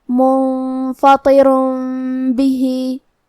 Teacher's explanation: طو حروف التفخیم میں سے ہے تو ہم یہ حرف کو موٹی آواز میں پڑھیں گے